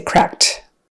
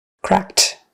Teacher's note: It's unvoiced, so we're going to unvoice the D.